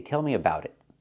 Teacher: We change the T in about to a fast D because it's between vowels.